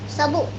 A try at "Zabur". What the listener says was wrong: Zabur. Jangan pakai sin. Zabur, ayo.